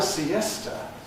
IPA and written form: siˈestə (siesta)